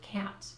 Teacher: the vowel sound falls somewhere between the a sound and the e sound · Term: ash